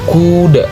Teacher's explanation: Pangkal lidah menutup belakang. Mulut dilepas cepat.